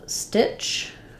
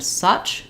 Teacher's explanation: So if I'm saying stitch and such, stitch is higher, such is lower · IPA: /ʌ/ /ə/ and /ɪ/